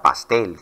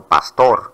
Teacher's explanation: las palabras agudas son aquellas que nos en la que nosotros pronunciamos la mayor fuerza de voz en la última sílaba es decir que cuando las dividimos están situadas a la derecha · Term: palabra aguda